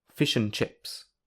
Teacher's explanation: the a and the d are often missing when between two words, such as the phrase, "fish and chips." So, only the middle sound, n, remains. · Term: weak form